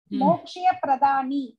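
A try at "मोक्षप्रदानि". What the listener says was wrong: மோக்ஷ பிரதானி மோக்ஷய இல்ல மோக்ஷ பிரதானி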